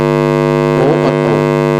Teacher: तो ये आपका वो कंठोष्ठ है, यानी कि कंठ प्लस ओठ से मिलकर इनकी ध्वनि बनती है, तो इनको बोलते हैं हम कंठोष्ठ है।